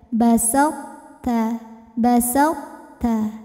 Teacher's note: saat membunyikan th yang masuk ke ta tidak langsung ta melainkan tebelin dulu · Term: sifat itbak, sifat itbaq